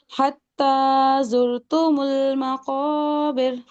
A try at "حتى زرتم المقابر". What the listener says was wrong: تا کو مجبور نہیں کرنا، پھر سے پڑھیے.